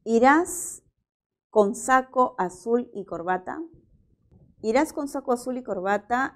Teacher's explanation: es una pregunta y es una pregunta que presenta tono final ascendente